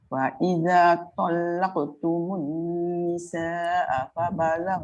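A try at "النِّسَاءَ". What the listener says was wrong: Nisa panjang sikit. Nisa panjang. Mat muttasil.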